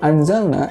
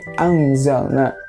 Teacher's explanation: yang tadinya hurufnya harusnya dibacanya n, konsonannya dirubah jadi eng gitu. Yang aslinya anzalna jadi angzalna.